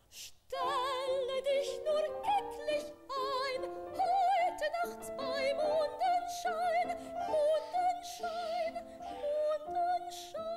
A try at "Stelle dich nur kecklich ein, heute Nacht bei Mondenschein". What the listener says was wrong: Aha, dahin muss es aber gleich gehen. Wissen Sie, der war im Kopf zum Schluss und am Anfang nicht. Na, okay, der muss gleich dahin gehen.